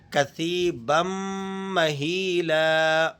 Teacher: غنہ ادا کریں گے اور میم پر ذرا سختی بھی ادا کریں گے.